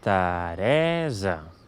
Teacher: Per tant, amb aquestes dues paraules, aquest nom de persona es pronunciaria Teresa. Veieu que la síl·laba tònica és la del mig, per tant, aquí sí que diem una /ɛ/